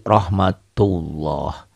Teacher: maka lafadz Allahnya dibaca tebal tafkhim · tafkhim ya rohmatullah tulisannya seperti ini dibacanya beda tulisannya kan Rahmatullah dibacanya jadi rohmatullah seakan-akan ini ada w-nya